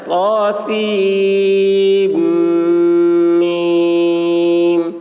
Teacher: طاسیم میم میں سین کو بلا نون کے میم میں ملا کر اس طرح پڑھائیں